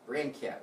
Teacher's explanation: so the stress would be on brand